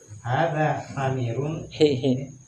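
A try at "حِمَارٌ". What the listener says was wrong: Hi. Bukan ha. Hi. Enggak, yang ini terbalik tadi harokatnya. Himar, bukan hamir. Himar. Ha, hi kasra dulu. Bukan hamir ya, himar.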